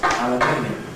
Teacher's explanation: aluminium in British English is double stressed